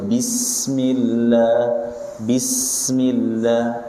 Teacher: Adapun ketika shad diangkat. Ada suara desisannya safir, ya. jangan disembunyikan.